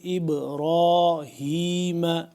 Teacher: با یہاں پہ ساکن ہے تو اس کو ہم قلقلہ کریں گے